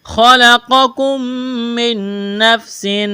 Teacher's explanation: میم ساکن کے بعد میم مشدد ہے، میم کا میم میں ادغام کریں گے، غنہ کریں گے